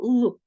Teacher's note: звук л який є приголосним дзвінким і м'яким